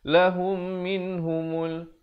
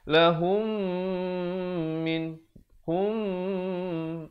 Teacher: mim mati bertemu dengan mim yang bertanda sabdu, hukumnya idgham mislan saghir, didengungkan 2 harakat.